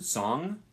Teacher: It's a single sound, and it's pronounced like an N, except at the back of your throat, or the back of your mouth. So it's a velar sound.